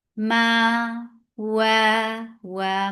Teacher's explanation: Ma, wa, مخرج الواو. Circling your lips for fatha, and make it 2 counts long.